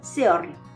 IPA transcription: sɛɔɹl